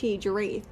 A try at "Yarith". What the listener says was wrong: Yeah, I think it's Ya. But it's with a very heavy H. Yarith, yeah.